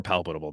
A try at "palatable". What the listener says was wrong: I think you put a T in it too. I think you said palpable.